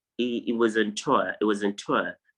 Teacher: it's like you're not really pronouncing the R sound at the end